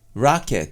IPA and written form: raːket (racket)